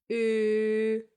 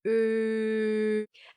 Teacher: And here is another one from the family, the O mit Umlaut. To say Ö, just form your lips like you want to say the O, but instead of that, try to say E.